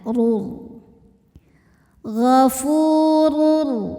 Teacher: Gofurur tho kita bunyikan secara tafkhim karena rnya berbaris tanwin dhammah maka dibacanya tebal pangkal lidah naikkan